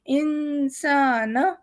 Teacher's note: سین کے بعد الف ہے، ہم اسے تھوڑا لمبا کر رہے ہیں، نون کو نہیں کر رہے